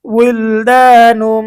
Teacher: তবাই, উইল দা, নুন মিম দুই পেশ নুম, উইল দা নুম, নুম এখানে তানবিন আসছে, তানবিনের পরে ঈদগামে বা গুন্নার হরফ মিম এসেছে, গুন্না সহ মিলিয়ে পড়তে হবে।